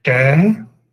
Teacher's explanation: Retroflexo com o E longo